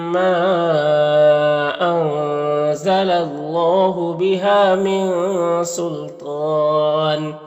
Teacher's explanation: अल्लाह के लाम से पहले लाम के ऊपर ज़बर है तो अल्लाह के लाम को पुर पढ़ेंगे